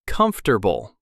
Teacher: A lot of learners say comfortable with four syllables, but we actually say comfortable with three.